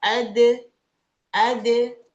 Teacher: Dal, ujung lidahnya ke pangkal gigi seri atas. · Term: kolkolah